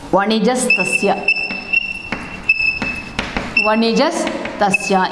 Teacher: In the place of visarga, we added here sakara. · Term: visargasya sakara adeshaha